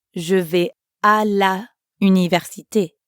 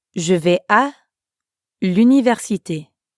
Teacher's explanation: we connect la and université to make l'université